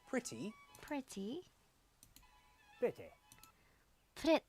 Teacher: if a word ends in an e sound in Upper up it's reduced to a weaker I sound